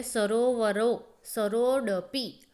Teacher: એમાં પણ ઓ શબ્દ સરોવર રો ઓ ઉપર વધારે ભાર મૂકવામાં આવે છે